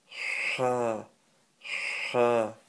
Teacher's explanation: It's a sharp burst of air from the middle of your throat.